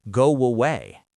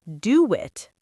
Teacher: This happens when the first word ends in a round vowel like O or U. Your lips are already rounded. So when you open them for the next vowel, a W pops out. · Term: W sound